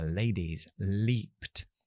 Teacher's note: eso es la clara esa es la normal muy parecido castellano se llama el lateral porque el sonido sale lateralmente es decir el aire está saliendo ahí · la parte de atrás de la lengua más adelantado, es decir, toco en la zona alveolar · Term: l clara, L clara